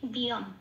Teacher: এটা অম বলতে পারবো না, ম পূর্ণরূপে উচ্চারিত হচ্ছে না, এখানে ম অর্ধরূপে উচ্চারিত হচ্ছে, অন্তঃস্থয়ের সাথে জুড়ে উচ্চারিত হচ্ছে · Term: ময় হসন্ত